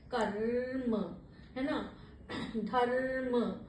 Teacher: रा का जो होता है वो थोड़ा सा वाइब्रेट करता हुआ रा का उच्चारण होता है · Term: रेफ